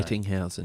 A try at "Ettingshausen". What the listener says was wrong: It's Ettingshausen. got an S. It does, yeah.